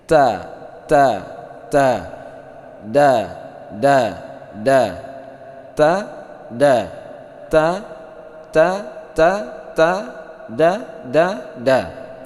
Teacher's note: Wa takhruju min tarfil lisani al-aridi, ya, ma'a usul lisaniyan lil ulya, antara punggung ujung lidah dan pangkal dua gigi seri depan atas, ya. Ta da ta da da. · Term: huruf ta dan da